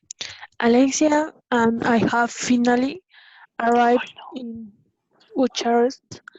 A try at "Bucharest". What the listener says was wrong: Okay, we say finally arrived in Bucharest with K, Bucharest.